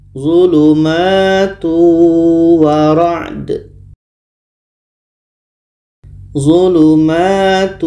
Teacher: Albaqarah 19 ini tanwin bertemu wa hukumnya adalah idgham bunah maka bunyi tanwin masuk kepada wa dan ada dengungnya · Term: idgham bi gunnah